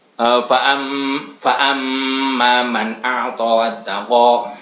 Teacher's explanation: suara yang memiliki dengung yang keluar dari rongga hidung bersamaan dengan suara membunyikan nun dan mim yang bertasdid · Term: hunah